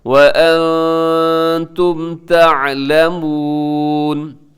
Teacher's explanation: نون ساکن کے بعد تا ہے، اخفا کیجیے گا